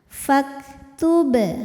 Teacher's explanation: Berikutnya ada hukum qalqalah sughra, karena ada huruf qalqalah yaitu ba yang sukunnya ini sukun asli dan ada di tengah bacaan, maka ba dipantulkan dengan pantulan yang kecil.